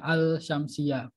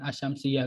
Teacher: Karena dia itu menghilangkan lam yang pada huruf alnya kan ada al seharusnya itu dia itu kalau kita baca secara per huruf dia itu ada al syamsiyah bukan asyamsiyah kalau kita baca per huruf, tapi karena dia ada huruf shin jadinya dileburkan lamnya hilang